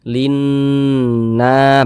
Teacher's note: na dibaca panjang, mad tabi'i panjang 2 harokat.